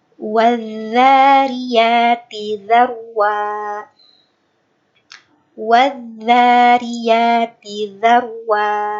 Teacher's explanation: Kalau dzal itu kan harusnya yang ujung gigi atas gitu, ujung gigi seri atas.